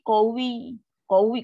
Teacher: Qawi. Kalau nak berhenti pun kita kena tekan. Tekan pada waw. Ya yang bersabdu tu akan naik.